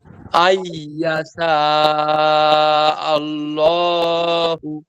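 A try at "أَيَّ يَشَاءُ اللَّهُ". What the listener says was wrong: এই যে শা স্পষ্ট করতে হবে, আইয়াশা, আবার বলেন।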